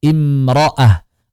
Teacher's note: Karena ta marbutah saat wakaf hanya dengan ha saja.